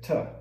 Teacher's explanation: essa palavra to é quase sempre reduzido. Ela ou desaparece ou vira schwa, essa som mais fraco, mais preguiçoso de inglês, que existe em português também, a segunda sílaba de para ou cama.